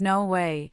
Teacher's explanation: When says no way, his voice rises sharply, conveying surprise. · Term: intonation of excitement